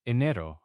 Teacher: the E at the beginning is like the A in bed, right? Not a long E sound. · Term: Short E